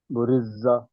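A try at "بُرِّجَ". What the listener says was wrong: రాని వత్తి పలకాలి బుర్రిజ దీర్ఘం లేదు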